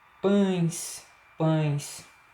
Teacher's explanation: Nesses casos aí são ditongos fechados, porque a pronúncia acontece tanto pela boca quanto pelo nariz.